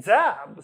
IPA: dzæb